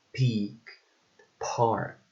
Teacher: P, which is a voiceless bilabial and stop sound